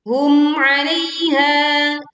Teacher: Hum 'alaiha, ini juga dialirkan suaranya dan masuk ke rongga hidung ya, tetapi tidak dengung terlalu lama dan juga tidak memutus ya ataupun tawalut memantul.